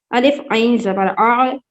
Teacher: الف کی آواز نارمل آئے گی اور عین کی آواز ہلکے درمیانی حصے سے آئے گی